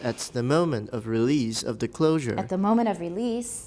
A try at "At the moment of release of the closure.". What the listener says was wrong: At the moment of release. Release is too long. At the moment of release.